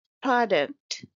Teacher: It's a two syllable word and stress is on the first syllable.